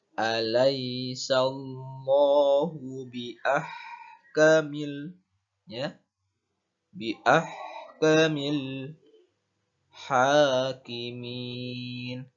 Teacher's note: perhatikan ha ketika berharokat sukun maka harus jelas dalam melafalkannya seperti mengeluarkan nafas.